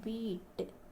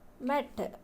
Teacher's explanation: these are front sounds tongue towards the front